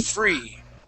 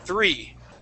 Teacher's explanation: with that TH sound, it is the tongue and the teeth and not your teeth and your lip